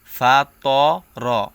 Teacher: ফাতা র বললে এই ত এর উচ্চারণটা তা এর মত হয়ে যায় সো এখানে কোনভাবেই ফাতা মানে তা এর উচ্চারণ করা যাবে না